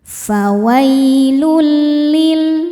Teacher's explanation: Selanjutnya ada idgham bila gunnah karena ada tanwin dhammah menghadapi huruf lam. Cara bacanya tanwin dileburkan ke lam tanpa ditahan, tanpa dengung. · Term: idgham bila ghunah